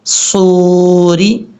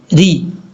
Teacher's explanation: را کو بریک پڑھیں گے کیونکہ را کے نیچے زیر ہے